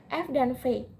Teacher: terjadi bila artikulator aktifnya adalah bibir bawah dan artikulator pasifnya adalah gigi atas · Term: geseran